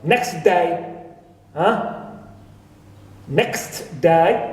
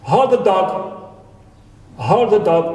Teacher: we remove T and we pronounce it next day